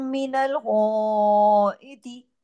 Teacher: एक तो गै मोटा है। फिर उसके साथ अलिफ मद्दा है। फिर उसके ऊपर एक मद और भी लगी हुई है।